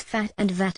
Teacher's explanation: these are sounds formed with the upper teeth and the lower lip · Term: labio dentals